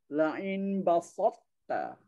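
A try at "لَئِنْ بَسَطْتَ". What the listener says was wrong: Itu dah pengaruh. Sin jadi so, basat.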